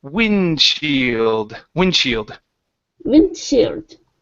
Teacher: effectively we're really going to skip over that D